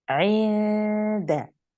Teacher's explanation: We hide the noon. The tip of the tongue does not go to the makhraj of noon. Instead, this time it gets ready and goes close to the articulation point of the dal. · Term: إخفاء حقيقي